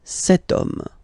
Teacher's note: as in French, H is not pronounced, so the first sound that we hear is O, okay? And then it will follow the same rule.